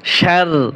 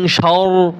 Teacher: পাতলা হচ্ছে শার আর মোটা হচ্ছে শর, পাতলা করতে হবে